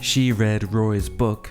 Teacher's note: we can now hear the tones descending in pitch